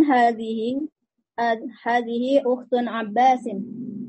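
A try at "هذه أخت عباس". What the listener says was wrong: Salah Ibu baca harokatnya. Yang ini ukhtu Abbas. Ulang lagi bacanya.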